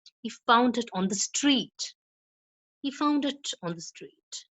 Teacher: So at the end, the pitch is low.